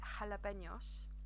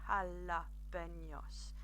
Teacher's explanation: the Spanish J or jota is pronounced with a h sound